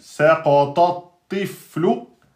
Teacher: fa soukoun et lem damma, c'est aminci.